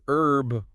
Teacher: in American English herb without the H is definitely more common